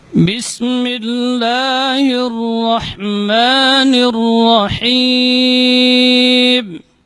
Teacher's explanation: Ya, itbaq syafatan inda nutqi ba, jadi merapatnya kedua bibir ketika mengucapkan huruf ba itu lebih kuat dibandingkan huruf mim